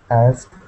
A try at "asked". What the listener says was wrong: reading, yeah, I heard asked. For this word, you actually just make the T sound at the end. Asked. Yeah, with a little T. And sometimes when we're speaking quickly, it sounds like asked.